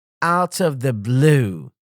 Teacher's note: Stress on out and blue.